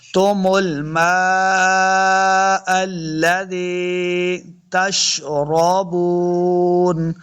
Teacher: لال کو نرمی کے ساتھ پڑھیں گے، رال زی یا ری، یا مد ہے، اس کو دو حرکات لمبا بھی کرنا ہے